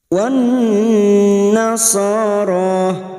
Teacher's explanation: Wan fokus pada huruf nun yang bertasdid dan mendengung selama 2 atau 3 harokat.